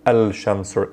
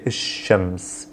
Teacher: i want to say il shems i would say ishems is i'm doubling down on the first letter which is the sun letter here and then i'm skipping the l sound i'm not saying